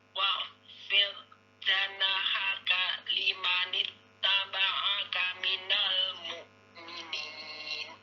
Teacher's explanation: Huruf kho keluar dari makhraj tenggorokan atas, dia mengalir suaranya, mengalir udaranya